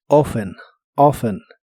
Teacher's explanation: la más común para los americanos es sin la t